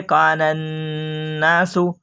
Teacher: پھر یہ کہیں گے الف لام تعریفی کے بعد حروف شمسی کے 14 حرفوں میں سے نون ہے، اس لیے الف اور لام کو نہ پڑھیں گے بلکہ بعد والے حرف سے ملا کر پڑھیں گے، اس کو ادغام لام تعریفی کہتے ہیں · یہ ہے کان الناس، اس میں نون میں غنہ ہوگا